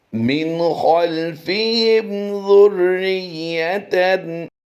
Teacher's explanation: نون ساکن میں بھی اور میم ساکن میں بھی غنہ نہیں کرنا